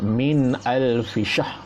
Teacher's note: Jangan dengungkan sebab nun mati bertemu alif atau amzah, maka izhar khalqi, zahirkan bacaan kita, jangan dengungkan.